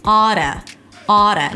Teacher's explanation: I think the most important feature here is the flap T, because there is no T. It actually sounds like a D.